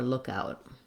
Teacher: Stress on look, less stress on out.